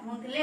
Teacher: आपका प्रोनाउंसिएशन जो है आपका नाक से ही हो रहा है। आपके जो शब्द उच्चारित हो रहे हैं, अक्षर जो आप बोल रहे हैं, उस पर चंद्र बिंदी लगी हुई है, इस वजह से आपको धुंधले बोलना है।